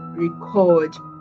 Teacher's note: Then we have the verb. The stress shifts to the second syllable, which is record.